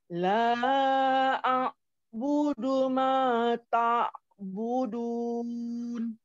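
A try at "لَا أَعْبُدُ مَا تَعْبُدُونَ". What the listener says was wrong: Oke, ainnya kurang terdengar dengan baik. La Oke, ta'budun sudah bagus, cuma di a'budu tadi kurang terdengar dengan baik.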